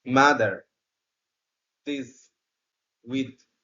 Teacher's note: এই সাউন্ডটিও দুই দাঁতের মাঝখানে জিহ্বার ডগাটা স্পর্শ হয়ে উচ্চারিত হবে